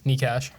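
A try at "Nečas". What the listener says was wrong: No, it's not cash. It's Nietzsches.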